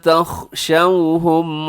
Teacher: اس میں خا موٹا ہے اور تخشو میں آپ نے ہونٹ جو ہے وہ گول رکھنے ہیں